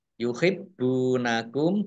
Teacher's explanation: Lam fathah alif mat tobi'i, yuhibbunakum, baknya dibaca double, ada tasdidnya